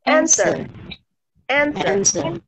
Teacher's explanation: Tidak ada W di sana suaranya.